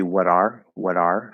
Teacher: we're going to flap the the t into a flap d and connect it over to the r